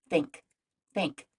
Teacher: the first like in the word think is actually unvoiced which means we don't use our vocal cords say think think there's no buzzing in the beginning the second